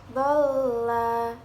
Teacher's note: Pada ayat ketujuh, dhalla, terdapat bacaan mad lazim mutsaqal kilmi karena ada huruf mad tabi'i bertemu dengan tasdid dalam satu kalimat. Cara membacanya panjangnya 6 harokat.